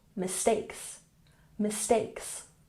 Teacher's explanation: mistakes has emphasis on the second syllable